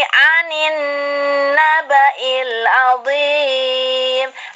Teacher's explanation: Alif lamnya tidak dibaca, dileburkan ke huruf samsiah, hurufnya yaitu nun. Hurufnya nun. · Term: idgham samsiah